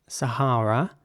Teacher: it's pronounced sahara in british english sahara with ah sounding a's